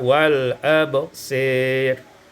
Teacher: imalatu fathil sad wal alif, dengan baca imalah fathah sad dan alif sehingga kita baca wal absir.